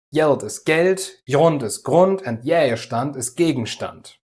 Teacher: Auf Düsseldorfer Platt wird zum Beispiel jedes G am Anfang einer Silbe als J ausgesprochen.